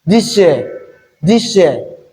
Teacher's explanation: Again, S plus Y will give us sh